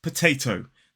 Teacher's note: So in a modern British RP accent, it's potato. The first T is aspirated because it's at the start of a stressed syllable, and the last T is unaspirated.